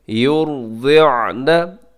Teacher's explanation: वल्वालिदातु, आगे युरदिअन, यहाँ पे योर में रा मोटा पड़ा जाएगा क्योंकि रा साकिन है और उससे पहले पेश है